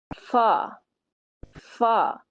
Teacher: اوپر کے چار دانتوں کو نیچے والے ہونٹ سے لگا کر ادا کرتے ہیں